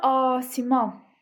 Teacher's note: Asiman sözündə deməli asiman i uzanmır. Yəni qapalı sa uzanmır.